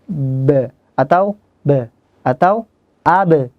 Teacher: Nah, jahr itu adalah tertahan nafasnya. Jadi mengucapkan huruf ba, mustahil ada nafas yang mengalir.